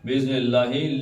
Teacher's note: اللہ کا لام پتلا، کیوں پیچھے زیر آ گئی ہے